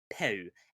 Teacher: we drop final voiced consonants, peu. And regrettably, Rule 67, o becomes o.